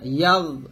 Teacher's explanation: গন উচ্চারণটা আমরা অনেক সময় কলকলা করে ফেলি, তো কলকলা করা যাবে না